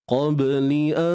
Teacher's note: nun mati bertemu dengan ta, ikhfa hakiki juga. Cuma di sini dengung nipis.